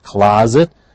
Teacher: The S is pronounced as a Z